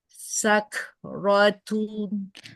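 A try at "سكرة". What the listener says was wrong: Sakratu. Kebanyakan renggangnya. Sedikit aja. Sakratu.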